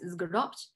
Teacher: here we have a complex coda of two consonants due to the addition of the dual first person suffix